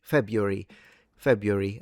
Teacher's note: So, I stress it at the beginning.